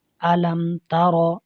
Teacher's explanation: یہاں میم ساکن کے بعد با اور میم کے علاوہ حرف ہے تا، اس میں اظہار شفوی ہو رہا ہے، غنہ نہیں کریں گے۔